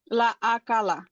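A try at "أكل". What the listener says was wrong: হ্যাঁ, আপনার ক এবং কায়ের মধ্যে একটি সমস্যা হচ্ছে, মনে রাখতে হবে যে আপনার এটা যেটাতে প্রবলেম হচ্ছে সেটা লিখে রাখবেন যে আমার এটাতে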